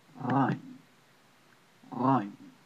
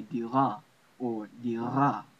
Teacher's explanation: It's a roll in the back of your throat, like a French R roll